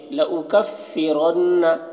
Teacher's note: لأکفرن یہاں پر لام میں زبر ہے اور حمزہ کے اوپر پیش ہے، لأکفرن را کو پر پڑھیں گے، نون مشدد غنہ ہوگا